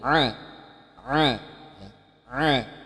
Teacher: huruf ini adalah di ujung pangkal tenggorokan ya ah ah ah ada penekanannya buruknya di ujung pangkal tenggorokan